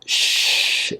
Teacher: your tongue back and then let out air you'll also notice my lips are pressing into a little hole and that shh is your voiceless sound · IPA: ʃ